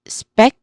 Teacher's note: the second syllable is speck, which is our stress syllable here. So it has a clear consonant cluster sound speck and a clear short vowel sound.